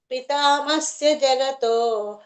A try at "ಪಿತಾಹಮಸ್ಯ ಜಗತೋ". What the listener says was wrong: ಪಿತಾಮಸ್ಯ ಅಲ್ಲ ಪಿತಾ ಅಹಮಸ್ಯ ಹಚ್ಚಬೇಕಲ್ಲ ಇಲ್ಲಿ